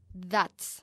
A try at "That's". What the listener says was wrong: Porque no quiero oír un D, sino TH.